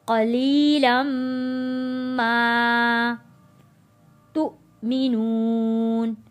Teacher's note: میم کے اوپر تشدید ہے، یہاں پہ غنہ ادا کریں گے